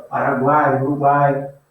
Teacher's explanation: Estão as três vogais na mesma sílaba, separadinhas na mesma sílaba. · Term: tritongo